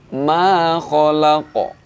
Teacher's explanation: hukum bacaannya adalah qalqalah kubra. Bacanya dengan dipantulkan.